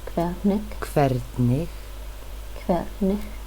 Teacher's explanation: I know it's spelled with an H, but it's a K sound.